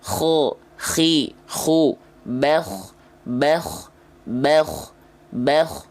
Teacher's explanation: maka dia akan mengalirkan nafas yang pasti ngorok · Nah, jadi di sini ya, dia dikeluarkan dari tenggorokan paling atas, tepatnya di ujung tenggorokan. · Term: huruf Kho, huruf kho